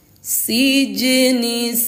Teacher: jimnya sukun dan berada di tengah kalimah, maka hukumnya qalqalah, dibaca memantul